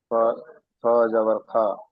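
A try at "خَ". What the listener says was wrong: না, খা হবে না। এইটা পুর অক্ষর, এখানে খা হবে না, আকারের উচ্চারণটা এখানে হবে না, আকারের উচ্চারণটা এখানে হবে না। এই যে সাতটি অক্ষর রয়েছে, এখানে আকারের উচ্চারণটা হবে না। খ জাবার খ, এখানে রয়েছে র জাবার র, রা হবে না, বুঝতে পেরেছেন?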